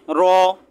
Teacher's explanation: জিহ্বার আগার উল্টা পিঠ তার বরাবর উপরে তালুর সাথে লাগিয়ে